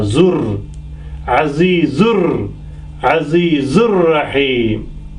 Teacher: this noon goes away, and zu joins with the ra